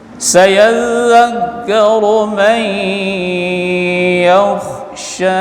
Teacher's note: Sayadzak ini zal tasydid. Sayadzakkaru mai nun mati jumpa dengan ya idgham bi gunnah